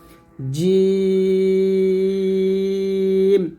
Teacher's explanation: জিহবার মধ্যখান তার বরাবর উপর তালের সঙ্গে লাগিয়ে আমরা উচ্চারণ করব শক্ত করে